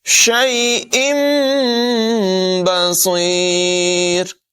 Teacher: تنوین کے نون کو میم سے بدل کر پڑھیں گے۔ یہ چھوٹی سی میم نمایاں ہے، اس کو میم کی آواز کے ساتھ پڑھیں گے، شیء بصیر۔